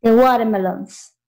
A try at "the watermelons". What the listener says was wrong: The watermelons, pero que suene la S. The watermelons. Recuerde, tiene que sonar la S.